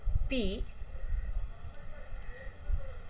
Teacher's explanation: So, we can say that p is a voiceless sound because there is no vibration of the vocal chords. But, it is a bilabial plosive.